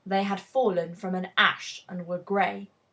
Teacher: just three feet that hit really hard on the Bleak imagery the emphasis is on the word fallen then on Ash and then on gray